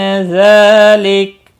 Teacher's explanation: ذال کے اوپر کھڑی زبر ہے، ایک الف کے برابر کھینچ کر پڑھیں گے